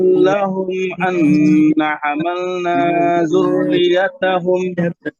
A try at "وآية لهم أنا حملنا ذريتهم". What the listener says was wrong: দেখেন আন্না নাতে মাদ আছে, আন্না হামালনা, এরপরে এই যে সাদ্দাওয়ালা যে হরফ, সাদ্দাওয়ালা যে ওয়ার্ড, হ্যাঁ, অর্থাৎ তাকদিরওয়ালা যে ওয়ার্ড, এই ওয়ার্ড গুলো বেসিক্যালি যারা হচ্ছে ধরেন তাদের ভাষা ইংলিশ, হ্যাঁ, ওনাদেরকে পড়াইতে গেলে ওনারা এইটা উচ্চারণ করতে কষ্ট হয়, কারণ ইংলিশে তো কোনো ইয়ে নাই, কি নাই, যুক্ত